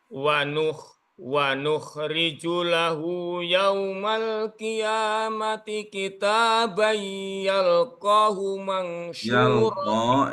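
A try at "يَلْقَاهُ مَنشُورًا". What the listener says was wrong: Yalqa, diulang kembali. Ko-nya panjang.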